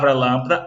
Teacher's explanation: na palavra lâmpada, a vogal A, que recebeu o acento circunflexo, ela tem o som fechado